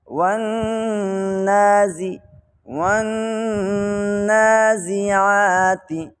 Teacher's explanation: عین جو ہمارا گلا ہے جس کو حلق بولتے ہیں، حلق کے درمیان والے حصے سے عین ادا ہوتا ہے